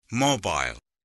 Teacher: This is a two-syllable word with the first syllable mo and the second syllable I'll. And the stress is on the first syllable.